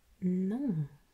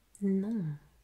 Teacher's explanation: And there we raise one of the main aspects of French pronunciation that relates to nasalization, meaning you will have to pronounce this sound through your nose.